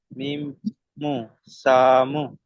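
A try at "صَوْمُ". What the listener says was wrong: সামু কি করে হলো? সদাউ জবর কি হয়? সউ। তাহলে সামু বলছেন জবর সউ, মিম পেশ মু, সৌ মু হবে। কিন্তু আপনি সাউ পড়ছে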